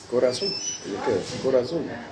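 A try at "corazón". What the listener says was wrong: Mais corazon, c'est pas on. Tu dis pas corazon, tu dis corazon. tu peux écrire corazon, mais tu ne prononces pas corazon. Tu ne prononces pas corazon. dis pas corazon. Normalement, normalement, tu devrais dire corazon. Mais au lieu de dire mi corazon, tu dis mi corazon.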